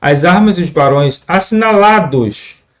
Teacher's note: uma junção, uma elisão entre a vogal E e a vogal O do artigo os